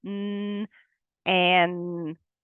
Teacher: we say the N sound kind of up in our nasal passages